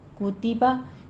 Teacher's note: کتبہ میں وہی ہونٹوں کو گول کیجیے. کتبہ پہلے کو ہونٹوں کو گول کر کے، پھر تا کسرہ ہے، ہونٹوں کو پست کیجیے، پھر با منہ کو کھولیے